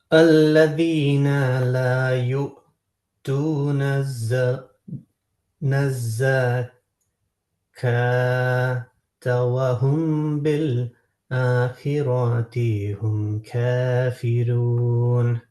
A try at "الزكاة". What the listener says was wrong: আচ্ছা, এখানে আপনি যে পড়লেন এই যে ওয়াজাকাতা, হ্যাঁ, আমরা শব্দটা কিন্তু ওয়াজাকা পর্যন্ত না, আপনি পড়ছেন এভাবে, হচ্ছে লা লা ইউতুনা যাকাতা ওয়া হুম, ইটস রং।